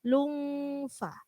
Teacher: karena di situ lungfa adalah ikhfa, maka ketika mendengung siap-siap mengucapkan huruf fa.